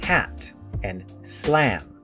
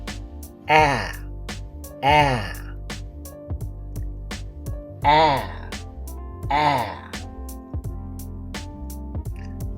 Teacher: we spell it with one a like in hat and slam ah is very open and very front put the tip of your tongue inside your bottom teeth open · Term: front vowel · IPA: /æ/